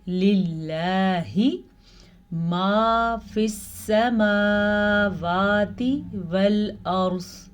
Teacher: लफ्ज़ अल्लाह के ऊपर जो खड़ी ज़बर है इसे तो हमने खींच के पढ़ा क्योंकि खड़ी ज़बर की मिकदार ज़बर से ज़्यादा होती है।